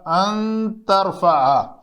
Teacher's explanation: اگر ان لگائیں گے تو یہ لفظ بھی اسی طرح ان ترفع, تو نون ساکن کے بعد تا ہے تو یہاں پہ اس کا اخفاء ہوگا, اس کے اندر شد نہیں آئے گی